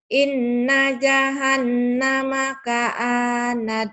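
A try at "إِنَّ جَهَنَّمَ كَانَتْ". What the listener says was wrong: ka'anat. Kanat. Kanat. K-nya panjang, ini punya nat. Kenapa ka'anat? Ini baris punya nun. K panjang. Kalau kap gini mengandung alif panjang. Kanat. Inna jahannama kanat mirsada.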